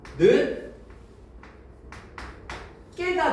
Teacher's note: 디귿과 기역이 만났죠? 그러면 된소리 대기가 적용돼요